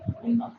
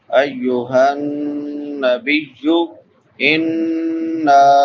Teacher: غنہ ہوتا ہے۔ ایک الف کی مقدار کے برابر آواز کو ناک میں چھپا کر ادا کریں گے